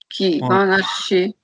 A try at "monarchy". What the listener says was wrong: Monarchy. Monarchy is the French pronunciation. monarchy.